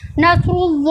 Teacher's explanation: स्वाद जो है हुफ मुस्तालिया है इसको होठों को गोल करके पढ़ा गया है